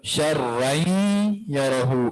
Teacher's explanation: اسی طرح آگے ایک اور جو لفظ ہے شرا، شرن تنوین آ گیا یرہ، اب یہ تنوین ہے، اس تنوین کے بعد یرملون میں سے یا ہے، اس تنوین کا ادغام یا میں ہوگا تو شرعین یرہ، ادغام بھی ہوگا اور مع الغنہ والا غنہ بھی ہوگا، ٹھیک ہے۔